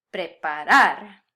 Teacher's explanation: Here, since this is a verb in the infinitive and therefore ends in the consonant ere, my emphasis naturally wants to fall on the last syllable instead of the second to last. Preparar.